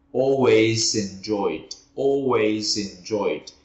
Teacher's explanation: nhưng mà tự nhiên mình đã có cái linking ở chỗ always enjoyed rồi